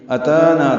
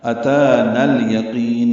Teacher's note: اتانا تا کو 2 حرکات لمبا کرنا ہے، نون کو الیقین کے لام سے ملا دینا ہے